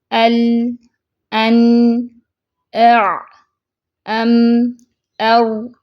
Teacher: فوراً سے آواز بند نہیں ہو رہی، حروف شدیدہ سے تھوڑا سا وقت زیادہ ہے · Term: حروف متوسطہ